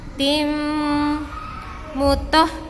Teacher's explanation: tanwin bertemu dengan mim, maka hukum bacaannya adalah idgham bi gunnah, didengungkan